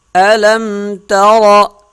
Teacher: را جو ہے وہ موٹی پڑھی جائے گی کیونکہ اس کے اوپر زبر ہے۔